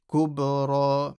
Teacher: Ra is heavy with a stretch.